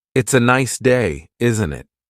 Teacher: The tone going up at the end tells the listener that you're asking a question. If you're making a statement, the intonation usually goes down at the end.